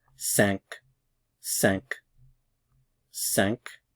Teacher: The tilde means that you channel the air through your nasal cavity when you're pronouncing this vowel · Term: nasalized